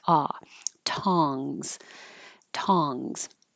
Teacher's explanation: And this one, tongs. The vowel is ah. So your tongue has to be low. Your whole jaw is low and the lips are straight up and down like ah. Tongs.